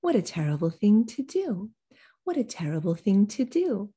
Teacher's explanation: everything goes really quickly and lightly until you get to that last word because that's the focus word